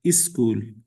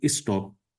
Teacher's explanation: For example, for the word special in order to break these two consonant clust uh these two consonants this cluster we put e sound in the beginning